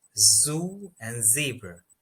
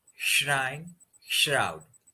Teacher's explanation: in pronouncing zoo, the tongue is a bit towards the front of the roof of the mouth, and in pronouncing shrine, it goes a little bit backwards in comparison to the z sound.